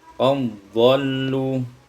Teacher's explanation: idghamud dal fi dhad, diidghamkan dal pada dhad